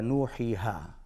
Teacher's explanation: واو، یا اور الف، اس کا مخرج ہے جوف دہن، یعنی اس سے مراد منہ کا خالی حصہ، یہاں سے ادا ہوتے ہیں واو مدہ، یا مدہ اور الف مدہ۔